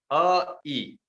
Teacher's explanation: जीभ जब तालु पर लग गई तब ई निकला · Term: तालु से निकला